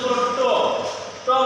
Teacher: এবার মূর্ধা হচ্ছে দন্তমূল আর হচ্ছে শক্ত যে তালু, এদের এই দুইটা জায়গার মাঝামাঝি যে স্থানটা সেটাকে বলে মূর্ধা। যেমন তুমি ট বলতে জিহ্বাটা যে উঁচু জায়গাটাতে বাধাপ্রাপ্ত হয় সেটা হচ্ছে গিয়ে মূর্ধা।